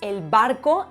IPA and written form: el.bar.ko (el barco)